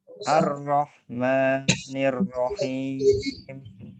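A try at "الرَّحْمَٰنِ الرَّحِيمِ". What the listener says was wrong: Rohnya tebalkan Pak ya. Ar-Rahmanir-Rahim.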